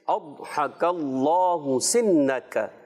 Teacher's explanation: یہ ضاد جو ہے تھوڑا سا پر رکھنا ہے، کاف کو باریک رکھنا ہے، اور اللہ کا لام اس میں جلالت جو ہے اللہ پاک کا لام موٹا کر کے